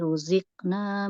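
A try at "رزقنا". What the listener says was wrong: Iya, jangan ruzikna, ruziqa. Ya, ruziqna.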